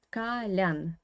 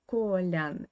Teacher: the stress in the word kalian is on the last syllable